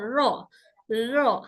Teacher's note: होता है रो र र रर इस तरह से नहीं बढ़ना र ज्यादा वाइब्रेट नहीं करना है ऐसे नहीं बस हल्का सा र र हल्का वाइब्रेशन र का मखर जबान के आगे से होता है जब जबान